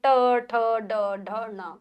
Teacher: फिर आते हैं ट वर्ग ट ठ ड ढ ण मूर्धा या मूर्घा नहीं मूर्धा मूर्धा यानी कि दांतों के ऊपर वाले भाग को हमारी जीभ स्पर्श करती है। बोल के देखिए ट ठ ड ढ न ओ फिर आते हैं त वर्ग त थ ध न दांत जब भी हम इनको बोलते हैं तो हमारी जीभ दांतों को स्पर्श करती है।